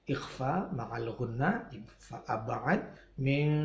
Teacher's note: min qablikum nun mati ketemu qaf dibaca ikhfa ma'al gunnah